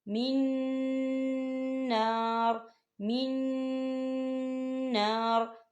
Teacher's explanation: جو بیچ والا نون ہے جو نون ساکن ہے وہ نون اگلے والے نون کے اندر مدغم ہو جائے گا